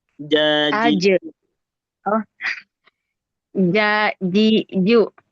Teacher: Jadi, kalau dia pelafalannya benar dalam arti dia pakai tengah lidah kemudian ketemu langit-langit. Nah, itu insyaallah C-nya enggak bakal keluar.